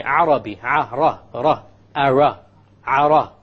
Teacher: It is very important that when we pronounce the R in Arabic, the ra in Arabic, we do not roll the tongue. We do not repeat the sound of the ra. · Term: the Arabic ra